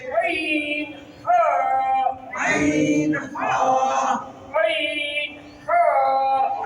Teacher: দুই নাম্বার মাখরাজ হলকের মধ্যখান হইতে